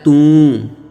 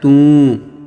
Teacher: ਟਿੱਪੀ ਦੀ ਆਵਾਜ਼ ਨੱਕ ਵਿੱਚ ਆਉਂਦੀ ਹੈ। ਟਿੱਪੀ ਕਿਤੇ ਵੀ ਲੱਗੀ ਹੋਵੇ, ਕਿਸੇ ਵੀ ਅੱਖਰ ਨੂੰ ਲੱਗੀ ਹੋਵੇ, ਉਸ ਦੀ ਆਵਾਜ਼ ਨੱਕ ਵਿੱਚ, ਸਾਡੀਆਂ ਨਾਸਕਾਂ ਵਿੱਚ ਆਉਣੀ ਚਾਹੀਦੀ ਹੈ।